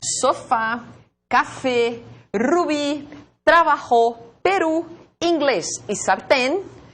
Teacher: são palavras agudas. Por quê? Porque a sílaba tônica é a última.